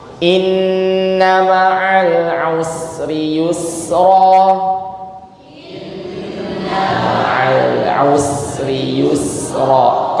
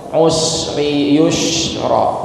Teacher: ya dhammah ketemu sin sukun, maka jangan sampai dimonyongkan